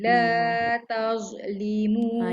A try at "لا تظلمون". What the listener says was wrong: Jaga jangan bunyi z tu.